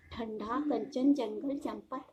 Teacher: अनुस्वार के उच्चारण में वायु नाक से निकलती है और उच्चारण झटके के साथ होता है